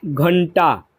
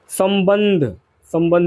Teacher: अनुस्वार के उच्चारण में नाक से अधिक सांस निकलती है और न या म की ध्वनि आती है। जैसे कि आपका घंटा इसमें आपका घंटा पे बिंदु आ गया।